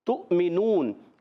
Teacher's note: ہونٹ گول ہو جائیں گے، تو واؤ پر حمزہ ہے اور حمزہ کی ادائیگی کلیئر ادا کریں گے، ہم خوب ظاہر کریں گے، تحقیق سے جھٹکے دے کر ادا کریں گے۔ تؤمنون، اب میم کے نیچے زیر حرکت کو نہیں کھینچیں گے،